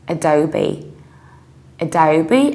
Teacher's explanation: So we say Adobe. Adobe, you have schwa at the very beginning, then you need to round O and you have B